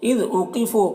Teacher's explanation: قاف کو پر پڑھیں گے, واو مدہ ہے یہاں پر, ایک الف کے برابر کھینچیں گے